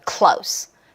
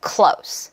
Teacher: 무성음으로 끝나는 소리는 소리가 삭하고 끊어지는 느낌이에요. Close. 정이 없어요.